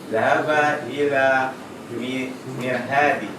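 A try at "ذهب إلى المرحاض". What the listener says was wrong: Ya, kalau ada mimnya, ada huruf qamariyah berarti lamnya dibaca. Ilal. Zahaba ilal mirhadi.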